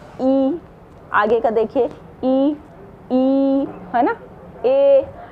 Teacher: ये आगे की जो जीभ होती है वो तुरंत उछल के आगे आ जाती है